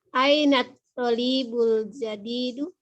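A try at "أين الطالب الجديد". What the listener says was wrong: Toknya yang panjang Bu ya. Ainat tolibul gitu ya Bu ya.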